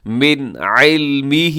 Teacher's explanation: نون ساکن کے بعد عین ہے، عین حرف حلقی میں سے ہے تو آپ یہاں پہ اظہار کریں گے